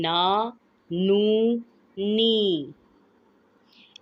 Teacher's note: نون غنہ کی ساؤنڈ نہیں آنی چاہیے